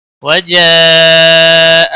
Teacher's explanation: وجاء مد منفصل ہے پانچ الف کے برابر کھینچ کر پڑھیں گے